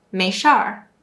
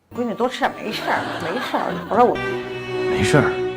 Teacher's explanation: In the Beijing accent, they tend to use more of the R-suffix, meaning that they often add the sound at the end of a word.